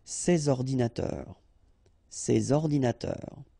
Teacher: All right, and of course les adjectifs démonstratifs, sorry, this or these, okay, and in that case I took the plural form, so these here, and then ordinateur, computers, so you should make the liaison between s and o